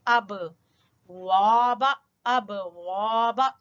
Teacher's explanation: اور با کے اوپر ہلکا کلکلا کریں گے